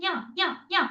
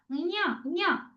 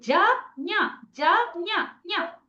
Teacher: ఞ ఞ ఞ అని ముక్కుతోటి అనాలి. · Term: ఞకారం